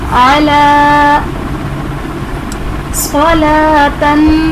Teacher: स्वाद हरूफ मुस्तालिया में से है तो इसे पुर पढ़ेंगे